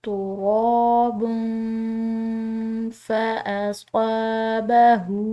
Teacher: ہا کے اوپر الٹی پیش ہے، اس کو ہم نے کھنچاؤ دیا ہے ایک الف کے برابر